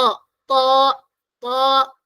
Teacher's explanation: എവിടെ ടച്ച് ചെയ്യണം മുകളിലെ മുന്നിലെ പല്ല് തുടങ്ങുന്ന സ്ഥലത്ത് അതുപോലെതന്നെ എന്താണ് ഇവിടെ നാവിന്റെ ബാക്ക് സൈഡ് ഉയർത്തിയിട്ടാണ് പറയേണ്ടത് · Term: ഹെവി ലെറ്റർ